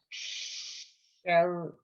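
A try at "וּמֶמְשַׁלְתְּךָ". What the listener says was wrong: sin, it's a shin. Umem. I believe it's umem shaltacha. One line across.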